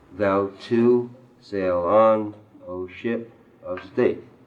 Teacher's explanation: Thou too, unaccented, accented. Sail on, unaccented, accented. O ship, unaccented, accented. Of state, unaccented, accented.